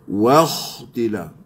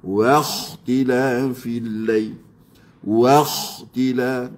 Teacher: Waw masuk pada kha, kita tafkhimkan, kita tebalkan pada huruf kha.